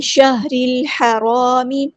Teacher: شین اور ہاں میں، ہمز کے صرف شو ہوگی شہر رل، را ہمارے یہاں پہ باریک لائٹ لیٹر ہے، را کو ہم نے لام کے ساتھ ملا دینا ہے ، شہر الحرام، حمزۃ الوصل ہمارا ڈراپ ہو جائے گا، لام